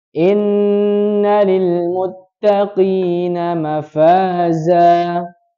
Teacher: Kalau huruf Q itu nempelnya di langit-langit yang lunak saja. Kita rasakan ada langit-langit yang lunak, itu Q.